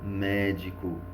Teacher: que e na letra c qual é a única palavra com a sílaba tônica é a antepenúltima sílaba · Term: proparoxítona